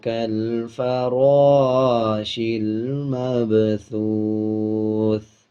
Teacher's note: جب وقف کریں گے یعنی آیت کمپلیٹ کریں گے تو ثا کی آواز کو آدھا پڑھیں گے اور زیر کو سائلنٹ کر دیں گے۔